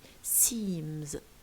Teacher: Look at seam here, it ends with a voiced consonant which is ma, and look at z here, the s of seam, it's pronounced as z. So we say seems, because ma and za are voiced.